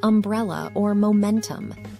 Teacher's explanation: This sound is made by keeping your lips closed and allowing air to flow through your nose. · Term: nasal sound